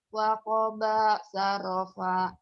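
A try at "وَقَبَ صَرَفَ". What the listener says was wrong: Waqoba sorofa. Bukan sarofa. Sorofa. Sorofa.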